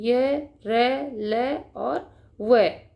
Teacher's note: उच्चारण के समय जिह्वा मुख के किसी भाग को स्पर्श नहीं करती है, अर्थात जब हम अंतस्थ व्यंजन का उच्चारण करते हैं तो जो हमारी जीभ होती है बेटा, मुख के किसी भी भाग को स्पर्श नहीं करती है, नहीं छूती है।